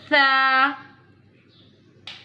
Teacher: Tha pronounce from the tip of the tongue touching the inner edge of the top two front teeth.